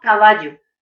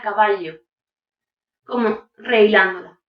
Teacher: Es la pronunciación de la doble L como una Y. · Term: yeísmo